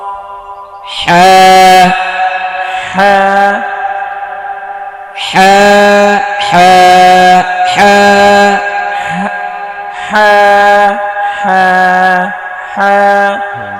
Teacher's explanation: গলা চাপিয়ে হলকের মধ্যখান হইতে হ্যাঁ উচ্চারণ করতে হবে